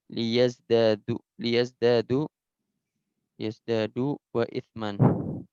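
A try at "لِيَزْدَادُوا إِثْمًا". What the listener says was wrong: Enggak, wawunya oh itu. Liyazdadu isman gitu.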